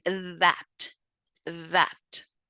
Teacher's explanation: the phoneme th, which is voiced, interdental, and it is a fricative, such as in that, that.